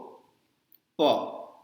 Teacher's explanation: तो ये प वर्ग जो है वो होठों से निकलता है, इसीलिए अगर आपको हिंदी में प शब्द बोलना है तो बिना होठ सटाए आप नहीं बोल सकते हैं